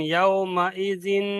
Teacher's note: তানবিনের আওয়াজকে নাকে তুলে একাধিক পরিমাণ গুণনা করে পড়তে হবে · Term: গুন্না